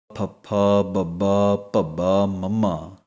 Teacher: ਬੁੱਲ ਜਿਹੜੇ ਨੇ ਦੋਵੇਂ ਆਪਸ ਦੇ ਵਿੱਚ ਜੁੜਨਗੇ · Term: ਪਪੇ ਵਾਲੀ ਲਾਈਨ